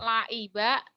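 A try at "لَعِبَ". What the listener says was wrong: Laiba. Ainnya ya belum mantep.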